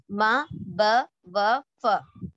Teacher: شفتان سے یعنی ہونٹوں سے ادا ہونے والے مخارج پڑھے تھے، اور اس کے اندر 4 لیٹرز تھے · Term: شفوی